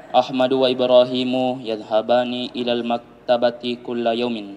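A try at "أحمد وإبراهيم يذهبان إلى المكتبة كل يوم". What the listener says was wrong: Yadhhabani ya karena huma mudzakkar.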